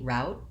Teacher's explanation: So I think this has been asked of me in some of our Friday classes, and there are two different pronunciations for route. I tend to say route with an ow diphthong.